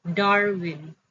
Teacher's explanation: in the word Darwin, stress is on the first syllable